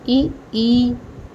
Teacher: कंठ से आ और आ दोनों होगा कंठ से। तालु से ई, ये तालु से बोला जाता है